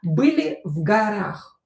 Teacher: o not stressed we pronounce this a